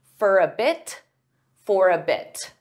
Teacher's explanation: sometimes native speakers will pronounce the T in this case because it's at the end of a sentence. There's a period.